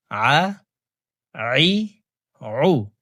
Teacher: প্রিয় দর্শক, হামজার উচ্চারণ করে পড়া যাবে না, হলকের মধ্যখান থেকে উচ্চারণ করব, কারণ আইনের মাখরাজ হলকের মধ্যখান থেকে হবে। আইন জবর আ, আইন জের আই, আইন পেশ উ, আ আই উ।